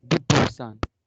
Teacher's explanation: Cuando el 10, cuando tenemos el número 10, se pronuncia dis, no dit, dis, con S, dis, ¿ok? Pero cuando la palabra que le sigue comienza por consonante, omitimos la S, la pronunciación de la S, por cuestiones de fluidez